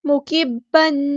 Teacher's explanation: با مشدد ہے تو جماؤ کے ساتھ اسٹرینتھ کے ساتھ ادا کرنا ہے